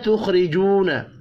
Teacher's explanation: خا ساکن پر قلقلہ نہیں کرنا. خا حروف مستعلیہ ہے، پر پڑھیں گے. · الف اور واو مدہ ہے، دونوں کو ایک ایک الف کے برابر کھینچ کر پڑھیں گے. خا ساکن پر قلقلہ نہیں کرنا. · را زیر کی وجہ سے باریک پڑھیں گے